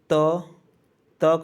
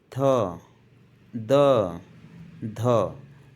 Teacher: जब हमारी जीव दांत को टच करती है या स्पर्श करती है तो उसको कहा जाता है दंत वर्ण